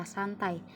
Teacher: huruf N di sini adalah dental atau alveolar. Kemudian bertemu dengan huruf T yang dimana T itu alveolar. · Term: asimilasi